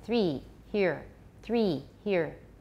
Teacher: the speaker has a higher vowel in three than in the beginning of the vowel in here · So the vowel in three should be more like an E than the vowel in here.